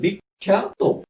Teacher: ককে repeat করেছে, ককে দুবার বানিয়েছে, সে দুবার করে ফেলেছে। আর ভিতরে প্রথমটি হলো কটি অল্প প্রাণ ক এবং এরপরটি মহাপ্রাণ ক